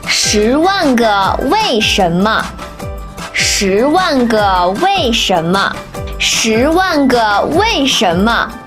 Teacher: 10 second tone. 1 fourth tone. 个 neutral tone.